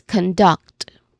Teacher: So we say it as conduct with emphasis on duct, of course.